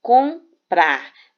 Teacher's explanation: porque o m ele não vai ter som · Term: dígrafo vocálico